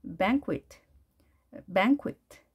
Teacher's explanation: 짧고 강하게 에 하시면 되고요. 뒤에 있는 모음은 약하게 발음이 됩니다